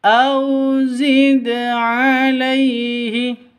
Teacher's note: qalqalah sugro lebih rendah pantulannya · au sifat lin, lentur, lemes, tidak boleh disentak, tidak boleh dipanjangkan.